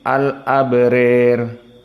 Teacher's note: imalah al-kubra pada alif yang datang sebelum ro